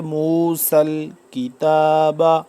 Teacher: سین سیٹی کی سی آواز نکلے